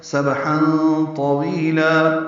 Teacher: فی النہار سبحا با ساکن پہ قلقلہ ہے، ہا وسط حلق سے ادا کریں گے، تنوین کے بعد طا آنے کی وجہ سے اخفا ہے